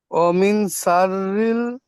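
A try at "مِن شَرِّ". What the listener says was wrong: জি, এমন পড়লে হবে না, টান দিয়ে পড়তে হবে, যেমন টান দিয়ে পড়েছেন। পড়েন।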